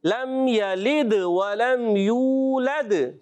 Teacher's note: यू वाव मद्दा है, वाव साकिन से पहले पेश आ रहा है, एक अलिफ खींचना है